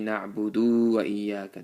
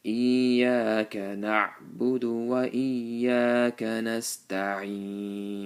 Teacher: That's wrong. Make sure you don't drag the dal.